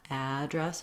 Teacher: would have second syllable stress and the vowel would change so if i'm talking about my email address i want to have first syllable stress the afowl it's like the word add plus the word dress